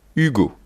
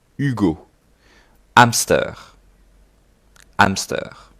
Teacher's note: Alors, attention, en français, le H, I don't pronounce the H in French, or very rarely. So imagine, for you, at start, just don't pronounce it.